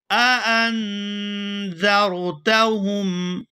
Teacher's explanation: یہاں پر دو حمزہ قطعی جمع ہو گئے ہیں اور دونوں کو خوب واضح کر کے ادا کریں گے